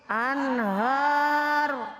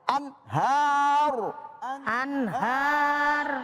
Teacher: Nun mati ketemu ha dibaca izhar. Dibaca jelas nun nun matinya ya.